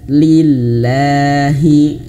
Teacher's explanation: lafaz jalalah ini dia bisa tipis kalau sebelumnya berharokat kasrah.